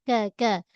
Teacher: Huruf kaf pangkal lidah. Tapi pangkal lidah ni permulaan langit keras. Ah dia tidak ah apa menyentuh lait lembut tak. · Ah dia tidak ah apa menyentuh lait lembut tak. Dia permulaan langit keras sikit. Jadi bunyi nipis huruf kaf